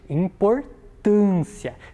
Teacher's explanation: A vogal ali, o A no caso, está mais fechada ou ela está mais aberta? É uma vogal mais fechada, por isso eu utilizo o acento circunflexo